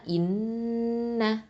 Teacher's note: இந்த இடத்துல நூனில் முஷத்ததா இருக்குது, அதனால் நம்ம அக்கமல் குன்னா கொடுக்கணும், அதாவது மிக பரிபூரண குன்னா கொடுக்கணும்